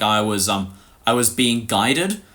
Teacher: my natural price vowel is so monophthongal that they thought they said I was being guarded